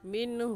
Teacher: اس نون ساکن پر ہم غنہ نہیں کریں گے بلکہ جلدی سے پڑھ جائیں گے۔